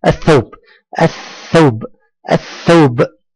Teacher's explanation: لم تنطق اللام وانتقلنا من الالف الى الثاء مباشره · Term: لام شمسيه, لام شمسية